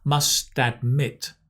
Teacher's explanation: the “t” becomes a /d/ sound because we're linking to admit